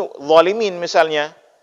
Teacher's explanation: Sedangkan huruf dha ini itu kita baca dengan ujung lidah.